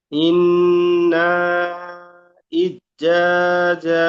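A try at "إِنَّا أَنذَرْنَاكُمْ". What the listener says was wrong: ইজ্জা কেন হচ্ছে? এখানে বানান করেন না ভাই, এখানে বানান করেন। আজ কেন পড়ছেন? নুন সাকিন কি কেন বাদ দিচ্ছেন? হচ্ছে? আনজারনাকুম। জাল র জবর জার, মুখ গোল হবে।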